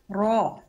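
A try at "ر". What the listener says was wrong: Oke, itu masih di-o kan. Ro. Enggak. Angkat pangkal lidahnya. Oke, itu masih wo. Nah, gitu ya, masih di-o kan. Ya, harusnya cukup diangkat saja pangkal lidahnya. Ro, ro, ro.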